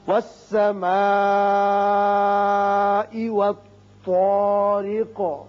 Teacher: یہاں چونکہ آیت ختم ہوتی قاف ساکن ہو جائے گا اور اس کی صفت قلقلہ ادا کریں گے